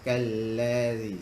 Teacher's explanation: Ujung lidah keluar sedikit. Ingat tu, ujung lidah mesti keluar sedikit. Keluar daripada dua gigi kita. Ada juga yang menerangkan gigit sedikit lidah tu.